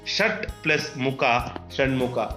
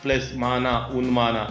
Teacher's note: ವರ್ಗದ ಪ್ರಥಮ ಅಕ್ಷರಗಳಿಗೆ ಅದೇ ವರ್ಗದ ಅನುನಾಸಿಕ ಅಕ್ಷರಗಳು ಆದೇಶವಾಗಿ ಬರುತ್ತೆ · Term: ಅನುನಾಸಿಕ ಸಂಧಿ